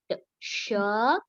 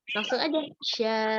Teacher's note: huruf shin itu makhrajnya di tengah lidah ketemu langit-langit atas